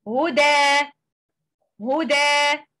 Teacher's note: When we stop at word huda, we drop tanween and add letter alif. And in such a case, this hukm is called mad iwad. · And in such a case, this hukm is called mad iwad. And we recite the word as lengthening mad with two count, two vowel count